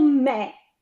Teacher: Me esiste in bergamasco e ha un accento aperto